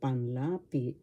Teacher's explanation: the accent is in the second syllable for panlapi